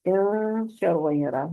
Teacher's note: नून की आवाज को नाक में छुपाया जाएगा, इसको इख्फा कहेंगे